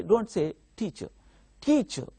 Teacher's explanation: in teacher the first syllable is stressed